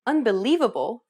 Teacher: do you notice how the lee is accentuated? That's because it's pronounced longer and louder than any other syllable in the word. And this is what we refer to as stress.